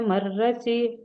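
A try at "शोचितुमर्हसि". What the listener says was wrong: ಮೊದಲು ರ ಬಂದು ಆಮೇಲೆ ಹ ಹೇಳಬೇಕು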